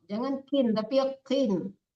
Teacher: Sodnya tebal, qafnya tebal. Jangan kin, tapi qin. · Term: qaf tebal